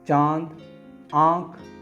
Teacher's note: अनुनासिक वर्ण, इनका उच्चारण मुख और नासिका, नाक दोनों से मिलकर निकलता है